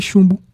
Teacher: uma paroxítona com vogal nasal formada por UM.